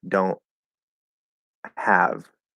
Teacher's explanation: We just close it, and just a straight close of the glottis is interpreted as a stop T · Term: glottal stop